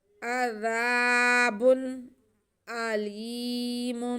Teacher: وَلَهُمْ عَذَابٌ أَلِيمٌ، با پہ دو پیش کی تنوین، آگے حمزہ آ رہا ہے، اس لیے ہم با کی آواز کو اور حمزہ کو واضح کر کے پڑھیں گے، یہ اظہار کا قاعدہ ہے۔